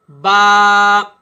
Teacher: اب یہ با جو ہے ناظرین یہ دونوں ہونٹوں سے ادا ہوتا ہے۔ جب تک آپ اپنے دونوں ہونٹوں کو آپس میں نہیں ملائیں گے اس وقت تک یہ با ادا نہیں ہوگا۔